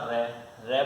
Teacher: दंतमूल या मसूड़ा से बोला जाता है आपका रे।